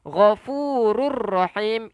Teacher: Idgham bila gunnah. Kita memasukkan tanpa dengung.